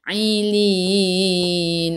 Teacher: Ai'u daripada kerongkong, bukan daripada hidung. Lin sebelum huruf akhir ada ya yang tak ada baris mad arid disukun.